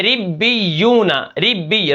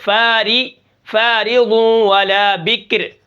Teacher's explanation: را کے نیچے زیر ہے تو را کو ہم باریک پڑھیں گے